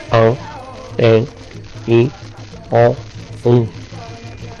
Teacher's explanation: son las vocales que se sacan por la nariz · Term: vocales nasales